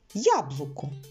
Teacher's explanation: це літера Я вона дає нам два звуки й приголосний м'який і а голосний таке дійство відбувається коли літера Я зустрічається на початку слова або